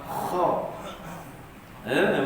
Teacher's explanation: Huruf kha isti'la, terangkat pangkal lidah kita bila sebut huruf kha. Kha. Makhrajnya pada halqi paling atas.